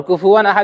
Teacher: اور یہیں پر یہ بات بھی آ گئی کہ واو نون زبر ون بھی ون ہی ہوتا، اور کفوًا احد میں واو 2 زبر ون ہے، واو 2 زبر ون، تو تنوین کی آواز اور نون ساکن کی آواز بالکل برابر ہو گئی